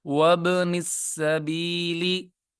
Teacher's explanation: با پہ قلقلہ ہوگا. قلقلہ کی آواز ڈبل آتی ہے.